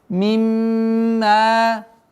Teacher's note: Сперва удержание назализация в размере двух огласовок. После этого удлинение в размере двух огласовок фатха.